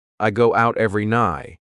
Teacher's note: I go out every night. Instead, your tongue is at the top of your mouth. You're about to make the T sound, but no air goes through, so it's just stopped at the top of your mouth.